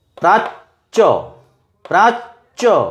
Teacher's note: চকে দুবার উচ্চারণ, একটা ছোট চ একটা বড় চ।